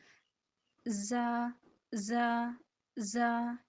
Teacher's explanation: اوپر والے اور نیچے والے دو دانت آپس میں ملیں گے، ٹھیک ہے، پھر یہ ادا ہوگا۔ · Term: سیٹی